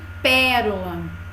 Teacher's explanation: e no dicionário tem a classificação certo cinco assim como pérola palavra com a anti penúltima sílaba Forte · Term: anti penúltima sílaba tônica